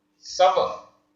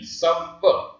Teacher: सा में स्ट्रेस आ रहा है, समय देना पड़ रहा है, इसलिए दीर्घ माना जाएगा। सा में दो मात्राएं लगी।